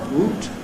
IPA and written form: w.uː.t (woot)